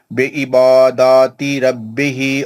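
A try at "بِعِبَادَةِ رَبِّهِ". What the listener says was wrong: ماشاء بی عباداتی نہیں بولنا، بی عبادتی، بی عبادتی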